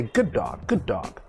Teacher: we don't pronounce two ds only one d sound